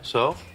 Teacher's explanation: saying so with a rising intonation, that is, as if asking a question, is used to tell someone that something does not matter.